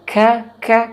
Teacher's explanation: Kaf itu makhrajul huruf, makhrajnya, makhrajul hurufnya adalah di pangkal lidah. Di pangkal lidah tersentuh kepada langit-langit atas.